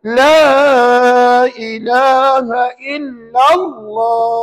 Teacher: Di mana ada kalimah Allah sebelumnya baris satu di atas. Lam tu baris satu di atas. Maka nama Allah kena baca tebal. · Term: alif lam jalalah tafkhim, tafkhim